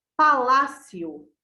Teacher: Palácio. O lá é a sílaba tônica.